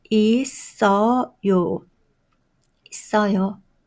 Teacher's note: The final consonant should be moved to next syllable.